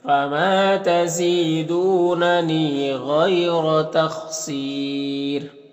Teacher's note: جب یہاں پر وقف کریں گے تو را کو باریک پڑھیں گے، کیونکہ را ساکن سے پہلے پھر یا ساکن ہے تو را کو باریک پڑھتے ہیں، تو اس طرح سے پڑھیں گے۔